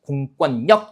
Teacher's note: 니은 받침으로 끝나는 몇 음절, 이음절 한자 뒤에 리을로 시작하는 말이 왔기 때문에 이때는 유음화가 아니라 뭐가 일어나는 거예요? 비음화가 일어나가지고요.